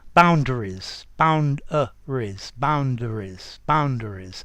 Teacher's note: boundaries between d and r is a schwa and not an e and z ending right boundaries bound boundaries boundaries boundaries yep there